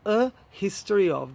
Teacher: Now it could partially be correct if you go back quite a few centuries, but I would say that in modern English we should say a history of, because we can actually hear the H, irrelevant of whether you've got the stress on the first or the second syllable